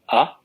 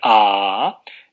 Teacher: utilizamos más aire y las cuerdas vocales vibran más y el tono va a ser más alto, ¿no? Entonces, eso quiere decir que cuando más aire sale, más alto será el tono del sonido.